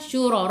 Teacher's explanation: Lillahi syuraka, syura, ra baca dengan tebal, ra baris atas tafkhim